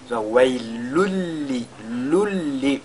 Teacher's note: Nous avons tanwin qui est suivi de la lettre lam. Donc le tanwin va fusionner dans la lettre lam. On fera donc idgham bila ghunna.